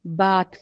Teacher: با الف کی با کی آواز تھوڑی سی لمبی کر دی اس نے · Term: الف مدہ